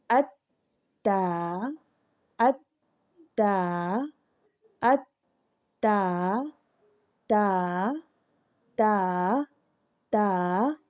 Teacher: ता अदा करते वक्त जो जुबान की नोक है ये ऊपर वाले दो दांतों की जड़ से लगेगी